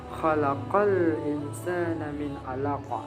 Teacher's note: Khalaqal di huruf qafnya itu seperti ada huruf O-nya. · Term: al-isti'ala